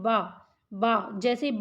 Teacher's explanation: खा है, इसको बोलने में भी कोई दिक्कत नहीं होगी। लेकिन बा, जैसे ही बा को उच्चारित करेंगे तो दोनों लिप्स आपके एक दूसरे को टच करते हैं